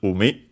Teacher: Should be accented, I think, on the first syllable